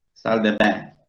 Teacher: al haber una sola N, no acompañada por una E, ese debe nasalizarse